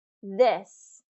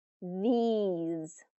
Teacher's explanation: This has that short I, this, versus these has the long E, these.